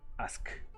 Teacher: La K suena muy sólida. No hay cómo prolongar el sonido de la K, porque termina de golpe. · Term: elongación fonética